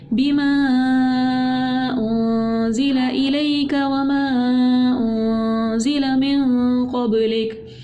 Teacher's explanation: اس کے بعد ہم نے یہاں پر کون سا قاعدہ کیا، اخفا کیا، کیوں، کیونکہ نون ساکن کے بعد زا آ رہی ہے، تو یہاں پہ ہم نے اخفا کیا، یہاں پر ناک میں آواز کو ٹھہرایا 3 سیکنڈ کے لیے نون کی آواز کو